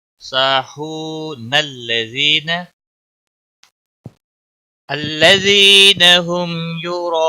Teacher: الذین هم عن صلاتهم ساهون الذین هم یراءون، الذین ملانے کی صورت میں نون لام کے ساتھ ملے گا